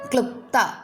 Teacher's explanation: നാവ് മുകളില പല്ലുകളിൽ മുട്ടിച്ചുകൊണ്ട് മലയാളത്തിലെ ല എന്ന അക്ഷരം പോലെ ഉച്ചരിക്കുക ഇതിൽ ര എന്ന ശബ്ദം കലരരുത് ഈ അക്ഷരം സംസ്കൃതത്തിൽ ഒരേയഒരു വാക്കിലാണ് കണ്ടുവരുന്നത് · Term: ദന്ധ്യമാണ്